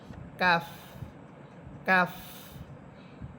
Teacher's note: এটা প এর উচ্চারণ হবে না। এটা হবে ফ। বাংলাতে ফ এর উচ্চারণ হবে।